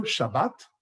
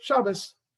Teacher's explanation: the T sound becomes an S sound in many, many cases